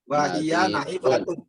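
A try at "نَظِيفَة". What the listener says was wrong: Nazifun. Wahya nazifatun, bukan nahi.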